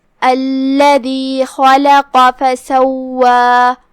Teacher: 2 حرف کے برابر واو کو ادا کرنا ہے. آخر میں 2 مد کے برابر ہم اپنی آواز لمبی کریں گے کیونکہ یہاں مد طبیعی ہے